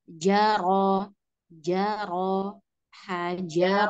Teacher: Ro-nya ada takrir ya. Jaro, ro tetap ada er-nya.